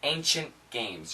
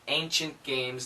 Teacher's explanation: And when we say a quick ancient games, you're not really going to hear the T sound. Ancient games, the N can cancel that.